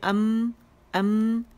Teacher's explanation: complete closure ہو جاتا ہے، دونوں لپس جب آپس میں ملاتے ہیں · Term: میم